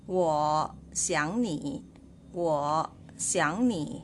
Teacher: you can just read the word 想 as the second tone, or you can remain as third tone.